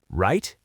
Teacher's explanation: Very sharp, very fast with a sharp drop.